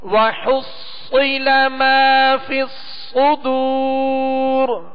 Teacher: تو اس صاد کو پر پڑھنا ہے اور سیٹی کی آواز اس میں پیدا ہوگی. وَحُصِّلَ مَا فِي الصُّدُورِ، اور ان دونوں صاد پہ تشدید ہے، اور تشدید 3 دندانوں والی شکل کو کہتے ہیں.